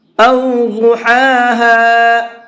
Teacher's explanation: ضاد کو پر کر کے پڑھیں گے